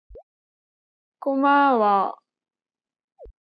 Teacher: she kept the same pitch for the first and second syllable but lower the tone for the last syllable